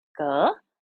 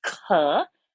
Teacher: ka, which is a softer sound, and when we force it out with more air and energy, it becomes kha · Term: alpa prana, mahaprana